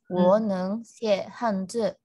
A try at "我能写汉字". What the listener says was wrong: A student, your 我 is wrong. Like everybody, here, 我, you cannot say full like that. You should say 我能, because I should already said many times, the third tone, you need to say the down and up. Only if this happened at the end.